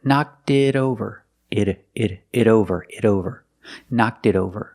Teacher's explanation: the T in it is a fast D because it's between vowels. So together, knocked it over.